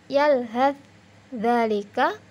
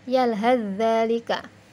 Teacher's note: taknya tidak dibunyikan, langsung membunyikan huruf dzal yang menjadi ditasydid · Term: idgham mutaqaribain